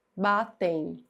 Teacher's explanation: Esse M fica com som de i. Então isso aqui, ó, é um ditongo.